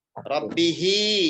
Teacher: Rabbihi, hi panjang 2 harokat pada hak dhamir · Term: mad silah